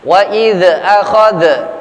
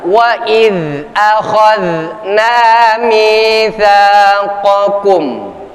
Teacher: Kekeliruan para pelantun Quran biasanya ya dibaca dengan cara menyeretnya atau memantulkan seolah-olah dzal sukun ini menjadi qalqalah